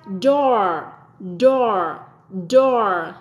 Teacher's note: giống âm o của tiếng Việt nhưng con kéo dài và cong lưỡi lên